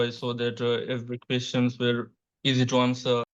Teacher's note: the candidate doesn't like fully open his mouth, and so a lot of the words are coming out of the front of the mouth, and then that leaves like a very limited phonological range.